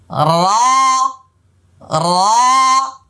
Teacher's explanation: কিছুতে রা হবে না, রে হবে না, র হবে না, ঠোঁট গোল হবে না। মনে রাখবেন 8 জায়গায় এখানে মোটা হবে লেখা আছে, এই 8 জায়গায় কিন্তু ঠোঁট গোল হয়ে যায়, কিন্তু গোল করা যাবে না।